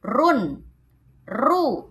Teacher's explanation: Maka huruf ro-nya terdengar jelas, terdengar tebal. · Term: tafkhim